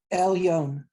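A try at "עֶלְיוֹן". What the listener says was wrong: Well, you put it together, but it's L and Yo. And that's what he'll put it together later, but he separated it. see it's separate.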